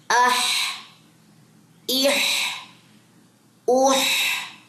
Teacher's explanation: ہا واضح ہو، گلے کے درمیان سے نکلتا ہے یہ